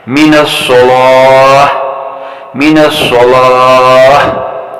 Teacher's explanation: آپ یہ تو جانتے ہی ہوں گے کہ وقف کی صورت میں تا مدورہ کو ہا مدورہ میں تبدیل کیا جاتا ہے، اور ہا مدورہ بھی حرف تا کی طرح ساکن حالت میں ہمس کی صفت رکھتا ہے